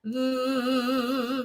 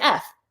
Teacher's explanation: you can pitch a V versus the unvoiced equivalent is an F it's created the same way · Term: voice consonant